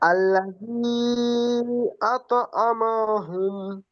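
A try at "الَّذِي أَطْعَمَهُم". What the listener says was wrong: জি মাশাআল্লাহ, আর পড়তে হবে না,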